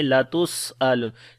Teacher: سین کے اندر صفت صفیر اور ہمس بھی آئے گی